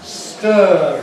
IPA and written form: stɜːr (stir)